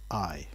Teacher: if you shout the word i you'll almost certainly be using a glottal stop